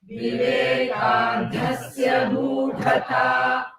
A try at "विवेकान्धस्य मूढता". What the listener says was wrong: So Vivekandhasya, that Mahaprana, and Moodhata, it is not Mooda, it is Moodha.